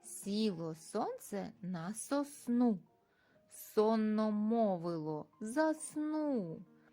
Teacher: широкий кінчик язика знаходиться за нижніми зубками спинка язика піднімається до твердого піднебіння де утворюється щілинка струмінь повітря проходить посередині спинки язика по утвореню утвореному жолубку голосові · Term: звуком с